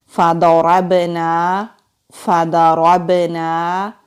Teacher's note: فا کو ہونٹوں سے ادا کریں گے، ضاد مستعلیہ حروف میں سے ہے، موٹا پڑھیں گے، را کو بھی موٹا پڑھیں گے، را کو با سے ملائیں گے، با ساکن ہے، کلکلا ہوگا، نون کے اوپر زبر ہے، آگے خالی الف ہے، الف مدہ ہے، ایک الف کے برابر کھینچ کر پڑھیں گے۔